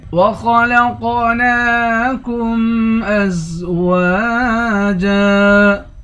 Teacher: آخر میں 2 زبر ہے. یہاں پر ازواجن نہیں ازواجا پڑھیں گے.